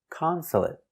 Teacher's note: Also finish with a stop T. Consulate. Not consulate, but stop T.